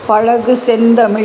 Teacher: இதில் ழகர லகர லகர வேறுபாடு அறியறதுக்கு சிறந்த ஒரு பாடல். முதல் அடியிலே ழகரம் சிறப்பு ழகரம் வரும். அதை நாக்கை மடித்து உச்சரிக்க வேண்டும்.